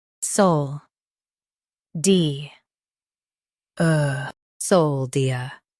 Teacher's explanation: Emphasize sol and make di smooth. End with a soft er.